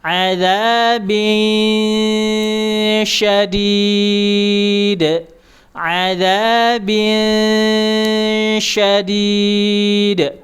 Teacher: diarahkan ke huruf sya, lidah tengah dinaikkan